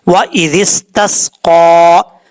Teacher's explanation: قاف حروف مستعلیٰ میں سے ہے، پر پڑھا جائے گا، اور اس کا مخرج ہے زبان کی جڑ اوپر والے تالو کے نرم حصے سے لگے تو قاف پڑھا جاتا ہے، اس لیے اس کو پر پڑھیں گے۔